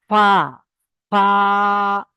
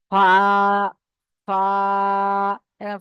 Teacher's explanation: চলেন, আমরা আবার পড়ি ফা, ফা। এই ফা, এই উপরের দাঁতটা নিচের ঠোঁটের সঙ্গে লাগিয়ে উচ্চারণ করেন।